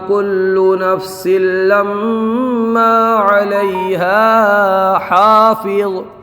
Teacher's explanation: یہاں پر لما کے میم میں گننا ہوگا کیونکہ میم مشدد ہے، اور قاعدہ یہ ہے کہ میم مشدد اور نون مشدد میں ہمیشہ گننا ہوتا ہے، جس حرف کے اوپر تشدید ہو اس کو مشدد کہا جاتا ہے۔